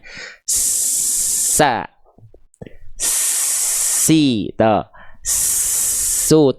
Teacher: kita keluarkan angin huruf sin, ngalir nafasnya, kerasa ya ngalir nafasnya. Telinga kita di saat yang sama merespon ada suara yang ikut mengalir menyertainya. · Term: mengalir nafas